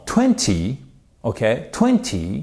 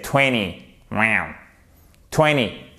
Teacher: En anglais britannique, on entend bien le te. En anglais américain, il part. Donc, en anglais britannique, c'est vraiment 20.